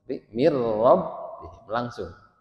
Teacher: Kalau huruf idghamnya lam dan ro itu tidak atau tanpa gun, jadi tidak boleh ditahan. Jadi tidak ada mir rabbihim gitu. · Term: idgham bila gunnah